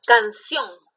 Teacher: esta es una palabra aguda y su mayor fuerza de voz está en ción